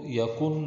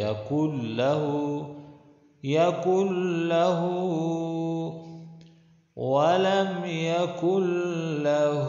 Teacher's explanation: قاف اور لام کو ملا کے پڑھنا ہے، نون کو نہیں پڑھنا چاہیے، نہ جوڑ میں اور نہ رواں میں پڑھنا چاہیے۔